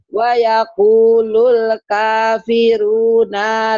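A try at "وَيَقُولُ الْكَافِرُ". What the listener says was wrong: Runa bukan. Wayakulul kafiru ya, nggak ada naknya. Runya pendek.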